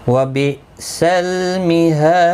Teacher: ہا الف مدہ ہے، ایک الف کی مقدار کے برابر کھینچ کر پڑھیں گے. دال ساکن پر قلقلہ ہوگا وقف کی صورت میں جب ساکن ہوگا. 3 سے 5 الف کی مقدار کے برابر کھینچ کر وقف بھی کریں گے.